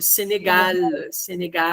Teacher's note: Esse L do céu da boca, no céu da boca, ó. Esse L final é lá no céu da boca.